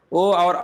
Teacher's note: ओ और औ क्या होते हैं, कंठोष्ठ होते हैं